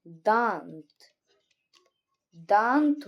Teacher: मतलब अनुस्वार में तो सिर्फ नाक से निकलती थी और अनुनासिक में क्या होगा कि मुख से और नाक से दोनों से निकलेगी